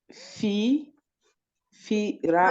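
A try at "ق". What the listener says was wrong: Alors là, comme il y a deux points en haut, c'est pas fi, le fi, c'est ça là. Du coup, ça, c'est un kaf, c'est qi. du mal, tu peux dire le tuna. mal, tu peux dire qira'atun.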